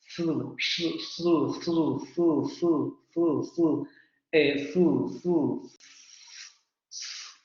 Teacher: Misma posición articulatoria, la lengua va hacia los alvéolos, solo que ahora en lugar de producir una oclusión, vamos a sacar el aire de manera continua, sin vibración de cuerdas vocales.